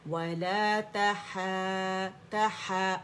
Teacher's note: آواز اوپر جائے گی، تہا کر کے امالہ نہیں کرنا، آواز اوپر لے کے جانی ہے